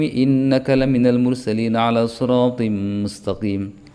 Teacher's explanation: Innaka tetap bergunnah, ala siratim mustaqim idgham bi gunnah.